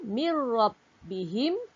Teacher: Nun mati bertemu ra, mir rabbihim, tak boleh baca dengung, kita kena baca dengan terang.